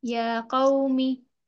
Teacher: या को खींचेंगे हम, क्योंकि ये एक अलिफ की बराबर खींचकर पढ़ा जाता है, सॉरी, अलिफ मद्दा के बराबर। या कौमी खड़ा जबर है ना, अलिफ मद्दा के बराबर खींचकर अदा करेंगे इसे